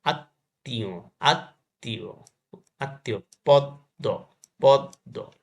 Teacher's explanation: শব্দের মধ্যে ম ফলা থাকলে সেই বর্ণ উচ্চারণে দ্বিত্ব হয় এবং সামান্য অনুনাসিক হয়।